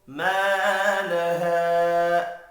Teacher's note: ما لها دو الف مدہ ہے، دونوں کو ایک ایک الف کے برابر کھینچ کر پڑھنا ہے